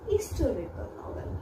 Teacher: Means again the stress, the accent is on the second syllable